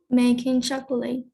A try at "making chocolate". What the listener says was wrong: El co no suena. Otra vez, vamos.